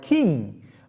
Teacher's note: ng sound, which is a velar, voiced velar nasal sound, right? So what we can see, the production of this sound could be seen in the final sound of the word king, but in English, doesn't occur in word initial position.